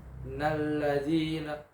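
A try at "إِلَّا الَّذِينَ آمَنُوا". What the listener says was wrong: Bukan pakai na, pakai la. Bukan inna,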